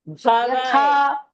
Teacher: Why yata? Yatha, tha mahaprana.